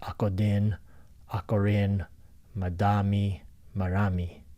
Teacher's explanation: in philippine languages you'll see that the d and the r is interchangeable